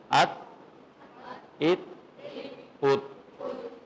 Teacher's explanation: نوک لسان پلس ثنایا علیہ کی جڑ، دانتوں کی جڑ ہوتی ہے جہاں سے دانت نکلتا ہے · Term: مخرج نمبر 12